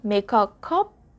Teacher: we have to carry the k sound for make to the next word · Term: blended